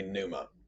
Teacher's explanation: supposed to pronounce every single letter so it would be pnuma some people drop the p sound and just say numa which is closer to how we treat it in english